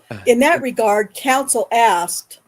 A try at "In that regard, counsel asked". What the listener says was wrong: In that regard, pause. Pause after the word regard.